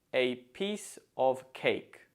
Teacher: Note that the stress falls on piece and cake because we don't tend to stress articles or prepositions. So it's a piece of cake.